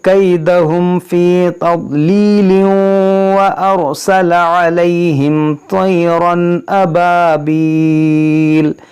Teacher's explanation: ملا کر پڑھیں گے تو پھر تنوین کے بعد واو ہے تو یہاں پر ادغام ہوگا